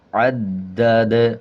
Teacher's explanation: جب دال پہ وقف کریں گے تو دال کا زبر سائلنٹ کریں گے اور دال پہ وقف کرتے ہوئے دال پہ قلقلہ ہوگا